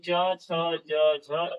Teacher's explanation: यानी जीभ जब हमारा छत के पिछले भाग को स्पर्श करता है, वहां से जो ध्वनि निकलती है उसे हम लोग तालव्य ध्वनि कहते हैं